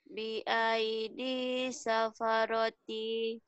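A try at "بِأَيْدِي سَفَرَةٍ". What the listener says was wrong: safarotin, jangan panjang kalau mau.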